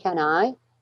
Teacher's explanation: Do you see how can is not stressed?